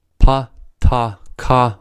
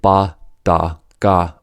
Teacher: pa, ta, ka are voiceless, and ba, da, ga are voiced. Sounds are called voiced when the vocal cord vibrates while the sounds are produced.